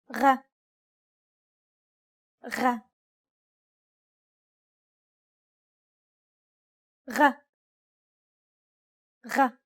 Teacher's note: This sound does not exist in English. It sounds like a turbulent G sound, or the sound you make when growling.